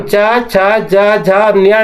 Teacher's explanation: इसलिए इसे वैज्ञानिकता की तरीके से जमाया गया है कि एक तरीके के जो वर्ण है या अक्षर है उसको एक लाइन में रखा गया है और एक तालु से इसका उच्चारण निकलता है। अर्थात हमारा जीभ जब छत पे छूता है हमारे मुंह के, तब जाके ये च, छ, ज, झ और न्या का उच्चारण आता है